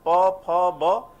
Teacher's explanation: Indian फ जब बोलते हैं तो दोनों ही लिप्स यूज होता है